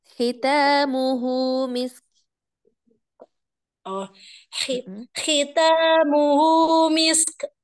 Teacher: Jadi huruf K-nya, huruf kaf-nya, tampakkan hamasnya.